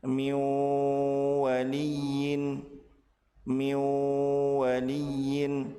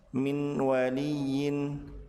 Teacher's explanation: Apabila nun sukun bertemu dengan waw, maka nun dilebur ke huruf waw dan ditahan 2 harokat disertai dengan gunnah.